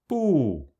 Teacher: The B sound is pronounced between the B and P sounds in English, but without expiring air.